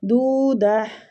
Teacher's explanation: اس تا پہ ہم رک رہے ہیں، اس لیے ہم تا کو ہا میں تبدیل کر رہے ہیں